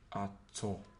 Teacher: As you can see, the first one has low tone, which is pronounced ato.